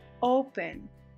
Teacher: You can hear that my stress is on that first vowel, not on the vowel E that is in between the two consonants. It's not open, it's open.